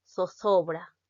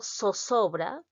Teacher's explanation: la articulación interdental de la Z con la articulación alveolar de la misma letra, tal como si se tratara de la S. Por ejemplo, si yo digo zozobra como peruana, los españoles que dicen zozobra.